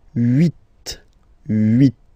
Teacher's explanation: this H letter here, okay, doesn't exist phonetically, so we don't really pronounce it, okay, so if you listen carefully, you will only listen or hear these vowels at the beginning of the word, huit, huit, okay, and then neuf.